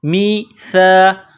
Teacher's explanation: زبان کا سرہ تھوڑا سا باہر نکالیں گے سا کو پڑھتے وقت